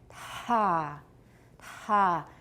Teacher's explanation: right about the moment that I'm releasing that t, that's when my vocal folds are open the widest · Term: so strongly aspirated